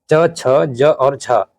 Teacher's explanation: इनमें से च, छ, ज और झ तालव्य व्यंजन है